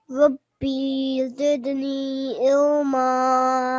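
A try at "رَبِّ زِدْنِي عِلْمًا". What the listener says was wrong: Make sure we don't elongate this. It's just Rabbi. 1 second.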